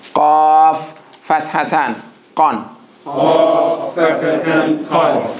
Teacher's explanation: I want to hear the click in the back of the throat when you say the qaf. Different from the kaf.